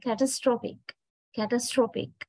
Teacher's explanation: when we change the word into an adjective, you can see not the second syllable, it is the third syllable that is stressed